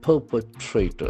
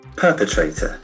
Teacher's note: The accent falls to the first syllable.